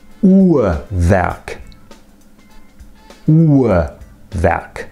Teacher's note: Now, I pronounce it Uhrwerk. The second R you can hardly hear at all because that syllable isn't stressed, but the first R is a vowel. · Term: the R as a vowel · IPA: [ˈuːɐvɛrk]